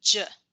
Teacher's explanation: in costa rica it's more like a ju it's kind of like a mixture in between the sh and the ch